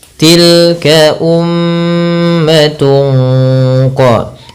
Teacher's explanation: Kemudian pada lafal tungqa ini ada bacaan ikhfa hakiki yang dimana suara tanwinnya disamarkan kepada huruf qaf